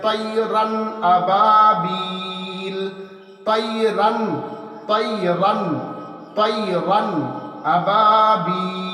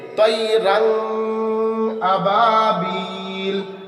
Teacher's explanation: ہم حمزہ کو ظاہر کر کے بلا غنہ کے اسپشٹ کر کے ہم پڑھیں گے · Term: اظہار